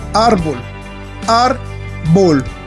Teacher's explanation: árbol, tiene el acento en la sílaba ar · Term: penúltima sílaba